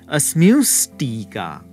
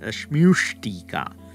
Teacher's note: then we get asmustika with a retroflex sh that's added.